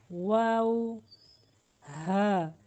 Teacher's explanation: जब दोनों होठों का कुछ हिस्सा खुला रह जाएगा तो वाव की अदायगी होती है।